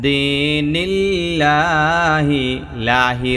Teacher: চিকন হবে কারণ আল্লাহ শব্দের ডাইনে জের আছে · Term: লাম চিকন